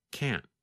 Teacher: Sometimes you can hear the letter T when we say can't, but other times it is harder to hear, and it just sounds like this: can't. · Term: held T